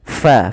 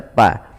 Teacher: Kemudian pada lafal fakulu minha, fa alirkan nafasnya, fa, jangan dibaca pa.